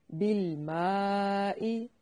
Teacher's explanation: मीम बारीक पढ़ा जाने वाला लफ्ज है तो अलिफ को भी बारीक पढ़ेंगे